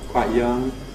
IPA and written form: ˈkwaɪʔ ˈjʌŋ (Quite young)